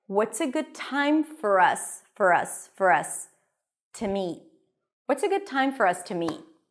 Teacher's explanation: The word time is the stress word here. It's longer, louder, higher in pitch. Notice the T that is a little aspirated.